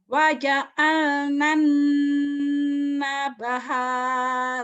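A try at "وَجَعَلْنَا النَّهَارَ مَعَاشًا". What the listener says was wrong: Salah. Nabaha. Mana ada nabaha? Coba lihat baik-baik. Waja'alna an-nahara ma'asha.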